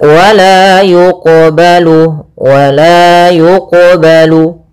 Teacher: qalqalah sugra yaitu kita membacanya tidak boleh ada sakta. Tidak boleh mantul.